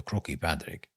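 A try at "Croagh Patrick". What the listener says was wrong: I think you mean Crow Patrick. No, it's not croaky. It's Crow Patrick.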